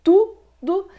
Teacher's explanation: o primeiro u aqui ele é forte o segundo que é o o mas tem som de u é fraco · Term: sílaba tônica